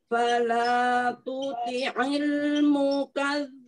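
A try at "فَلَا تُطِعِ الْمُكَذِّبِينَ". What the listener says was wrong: Fa-nya, fa-nya ditebalkan ya, Umi. Mukadzibin. Bi, bi. Seperti huruf I. Bi.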